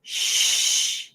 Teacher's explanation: the sh sound, you can see that my lips are a bit rounded